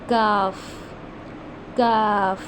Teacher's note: इसको हम अदा करते हैं, जो हमारी ज़ुबान की जड़ है उसको हमने सख्त, यानी कि जो हमारे तालू का सख्त हिस्सा है ना उससे अदा करना है, यानी कि इस वर्ड के अंदर सख्ती होनी चाहिए